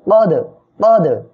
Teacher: এখানে দাল কলকলার অক্ষর সাকিন অবস্থায় আসছে, ধাক্কা দিয়ে পড়বেন।